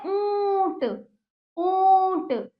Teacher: देखिए गले से भी आपका क्या हो रहा है? कंपन उत्पन्न हो रहा है, और नाक से भी ऊंट। तो दोनों ही इसके उच्चारण स्थान है। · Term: चंद्र बिंदु